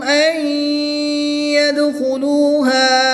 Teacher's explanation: نون ساکن کے بعد یا حرف معلوم میں سے ہے تو یہاں پر ادغام مع الغنہ ہوگا، غنہ کر کے پڑھیں گے